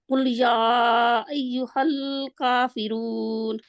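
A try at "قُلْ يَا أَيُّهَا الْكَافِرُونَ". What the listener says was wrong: हल नहीं करना। कुल कुल या अय्युहल काफिरून, अलग अलग हल काफिरून। इसकी प्रैक्टिस आप करेंगे, निशान दोनों के नीचे लगाएंगे, अलग अलग करके हल एंड कुल अलग अलग करें और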